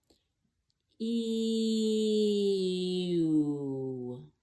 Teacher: So if I go from E to U and I glide between them, I will naturally run into the Y. Then you can memorize where that Y is.